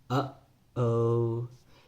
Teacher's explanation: and then released it to make the O sound oh that that little duration of time where you held off the air you cut it off and then you released it was a glottal stop